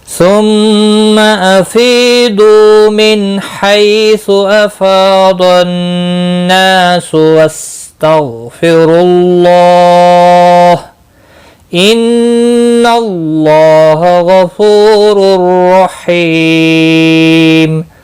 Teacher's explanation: نون مشدد پر گنہ ہوگا، اللہ کا لام زبر کی وجہ سے پر پڑھا جائے گا، یعنی موٹا پڑھا جائے گا، اس کے اوپر کھڑی زبر بھی ہے، ایک الف کے برابر کھینچ کر پڑھیں گے۔